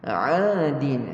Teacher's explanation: sempitkan halkum kita yang tengah. Untuk huruf ain, makhraj dia di tengah halkum. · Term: wasatil halqa